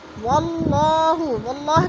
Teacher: واللہ کی اللہ کو پر کر کے پڑھیں گے اس لیے کہ اللہ سے پہلے لفظ واو کے اوپر زبر ہے تو اللہ پر پڑھا جائے گا۔